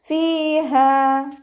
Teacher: ഫിന്റെ മഹ്റജ് മേലെ മുൻപല്ലിന്റെ അറ്റം താഴെ ചുണ്ടിന്റെ ഉൾവശത്ത് നനഞ്ഞ ഭാഗത്ത് വെച്ചിട്ട് ഉച്ചരിക്കട്ടോ